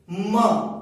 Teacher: जब म बोलते हैं तो दोनों ओष्ठ आपस में टच हो रहे हैं